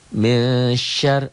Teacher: Nun mati ketemu shin dibaca samar ikhfa. Ya. Nun mati bertemu dengan shin.